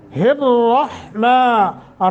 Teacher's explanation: اچھا، لفظ اللہ کو تھوڑا سا لمبا کریں گے، الرحمن، را کو موٹا کریں گے چونکہ را کے اوپر زبر ہے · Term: موٹا تفخیم